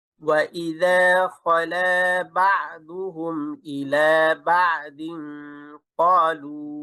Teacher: তানবিনের পরে কফ ইকফা, এবং ইকফা এর ইস্তেলার হরফ গুণা মোটা হবে